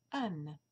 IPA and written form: æn (Anne)